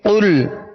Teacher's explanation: قاف پور پڑھیں گے اس لیے کہ یہ حروف مستعلیہ میں سے ہے، اور لام کا جو سکون ہے، جزم ہے، اس میں جنبش پیدا نہ ہو.